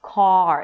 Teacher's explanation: once you pronounce the vowel let's say 80% of the sound then the last 20% would be the R. · the tongue drops down, the back of the tongue pushes down a bit, the mouth opens, and in this case, because of the R, the lips round a bit. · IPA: kɑːr